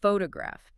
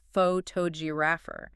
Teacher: if I change the stress to the second syllable, it becomes photographer. The first O turns into a lazy sound. A schwa. The acoustic shape of the word completely morphs based entirely on the stress.